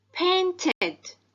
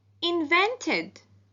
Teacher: The ed ending is pronounced id after the sounds t and d.